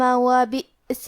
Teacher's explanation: کلمت بئس میں یہاں حمزہ ہے اور حمزہ کی ادائیگی حلق کے نیچے والے حصے سے ہے، اور کیونکہ اس پہ جزم ہے تو ہمیں حمزہ کو ظاہر کرنا ہے۔